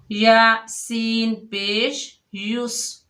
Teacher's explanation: سین سختی اور سیٹی والا حروف ہے